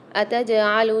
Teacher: جیم کے اندر قلقلہ کرنا ہے ہم نے، ڈبل آواز نکلے گی، آواز پلٹ کر آئے گی